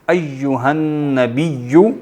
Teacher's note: تو ایہا النبی یا پہ شد ہے، اور نبی کے آخر میں بھی یا پر شد ہے. دونوں میں یا کو ڈبل پڑھیں گے، سختی کے ساتھ پڑھیں گے